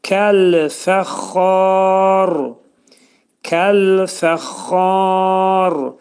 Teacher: Burada xa 4 səs qədər uzanacaq. Çünki məddə ariz olacaq.